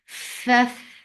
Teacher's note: give hams in fa. Hams is flow of breath. F, and here you are giving rakhawa too.